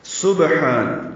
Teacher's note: سبحان، سین سیٹی کی باریک آواز سے پڑھیں گے، با سے ملائیں گے، با ساکن پہ قلقلہ ہوگا، یعنی اس کو ہلا کر ادا کریں گے